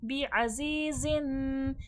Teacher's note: ज़ा सख्ती सीटी के साथ पढ़ा जाएगा।